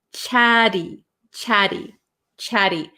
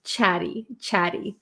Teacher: in American English we're gonna take these T's and we're going to make them a flap t